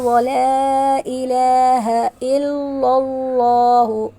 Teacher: اللہ تعالیٰ کے نام کو پر پڑھیں گے کیونکہ اس سے پہلے زبر ہے